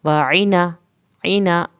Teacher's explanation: आइन की ज़ेर के फ़ौरन बाद नून पढ़ना है ताकि आपकी आइन की ज़ेर लंबी ना हो